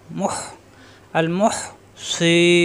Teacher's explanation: হায়ের সাথে কণ্ঠনালীর মাঝখানে চাপ